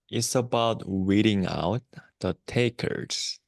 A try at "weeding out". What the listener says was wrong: Yeah, say weeding out. Yeah, the first time sounded more like an R sound, like reading out.